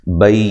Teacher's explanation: یا لین ہے، نون کو لمبا نہیں کرنا